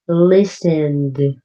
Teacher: listened ends with a D sound less strong than looked